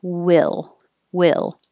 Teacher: a little lower and there's no movement in the tongue will it's flat until i go up for the l